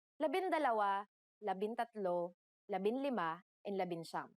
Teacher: For the letters D, L, R, S, and T, the G from NG is dropped to make it easier to pronounce